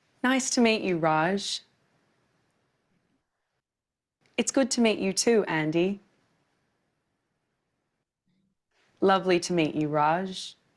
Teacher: When we use the word to in the middle of a phrase, the sound changes. Instead of an ooh sound, it becomes a schwa sound.